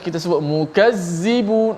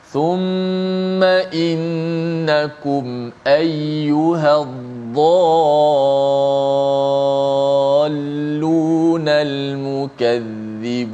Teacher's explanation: hujung lidah itu mesti dikeluarkan sedikit di bawah gigi kacip atas itu. Jangan kita sebut mukazzibun. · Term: za